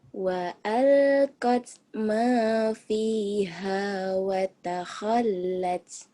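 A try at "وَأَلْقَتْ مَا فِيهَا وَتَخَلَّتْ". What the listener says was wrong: Kurangnya cuman hamznya doang ya. Wa qallat ma fiha wa takhallat. Pecah pokoknya ujungnya. Tak sama kap mati.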